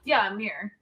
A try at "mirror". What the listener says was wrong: Mirror. I can't even hear the other two R's in what you're saying. It's just mirror.